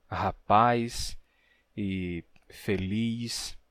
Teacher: sempre que você tem uma vogal tônica final seguida do som de S, então você tem um alongamento que gera um ditongo